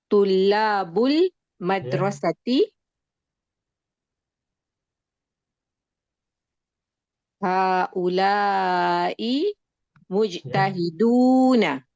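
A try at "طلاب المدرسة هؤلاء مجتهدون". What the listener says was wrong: Ya, bagus, bagus.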